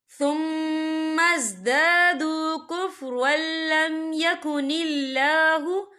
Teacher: را کے پر تنوین ہے، تنوین کے بعد جو ہے لام آ رہا ہے، اور لام جو ہے حروف یرملون میں سے ہے، تو یہاں پر ادغام ہوگا، تو ہم اسے بنا غننے کے پڑھیں گے۔